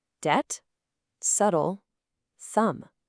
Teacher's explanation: In every single one, the bee is totally silent.